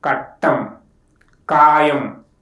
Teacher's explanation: To pronounce the sound, the back of the tongue raised against the soft palate, and the airflow is completely blocked, and then releases. When the letter ka occurs next to nasal sound, it is pronounced as ga. · The sound ka is called velar stop. To pronounce the sound, the back of the tongue raised against the soft palate, and the airflow is completely blocked, and then releases.